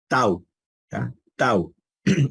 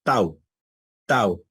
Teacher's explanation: nuestra lengua hace una oclusión, un cierre contra nuestros dientes y nuestro paladar final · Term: dentales